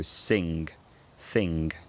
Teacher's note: in common with a lot of northern dialects for most speakers the sound is always followed by a g